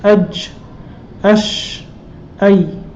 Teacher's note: From the center of the tongue when touching the palate, we have these three letters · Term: jim, sheen, and ya